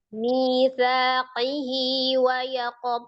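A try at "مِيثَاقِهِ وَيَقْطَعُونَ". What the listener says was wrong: Ayo, ahsanti.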